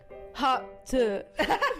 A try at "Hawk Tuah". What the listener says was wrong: You gotta put like an emphasis on it, like tuh. You know, like tuh.